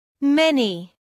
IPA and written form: ˈmeni (Many)